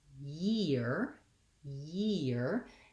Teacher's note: the difference when i'm saying the word year year is that i really have to start with a glide first